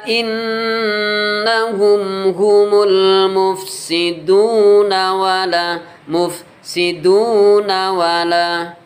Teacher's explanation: Kemudian cara yang kedua, bila wasol dibaca mat tabi'i, panjangnya 1 alif sama dengan 2 harokat